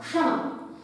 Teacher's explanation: क का उच्चारण है लेकिन इतना अधिक धीमा है, इतना धीमा है कि हमें उसे सुनाई ही नहीं दे रहा है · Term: आधे क